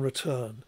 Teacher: the second syllable is louder and longer and the main pitch movement is now on the second syllable. So even though they're phonetically almost identical, the difference between these two words is carried by lexical stress.